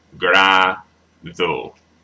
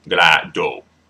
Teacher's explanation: do a slight lisp when you pronounce like D in a vowel